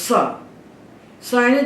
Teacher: दात में जीव को चिपका के जो बोले बोला जाए वही है दंत सकार